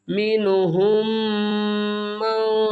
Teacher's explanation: علی بعض منہم من کلم اللہ، منہم، میم ساکن کے بعد آگے میم مشدد ہے، جب بھی میم ساکن کے بعد میم مشدد ہے تو ہم میم کے اوپر اخفا کر کے پڑھتے ہیں، یعنی کہ میم کی آواز کو چھپا کر پڑھتے ہیں۔